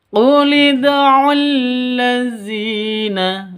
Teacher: dzi memiliki panjang dua ketukan karena ya sukun. · Zi panjang 2 ketukan. Karena ada ya mati diawali dengan kasroh. Panjang 2 ketukan.